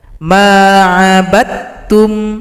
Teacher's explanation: Di sini huruf dal telah gabung pada huruf ta, idgham mutajanisain. Tidak dibaca lagi karena dia telah bergabung pada huruf ta.